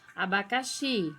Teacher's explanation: Xi é a sílaba tônica, é a mais forte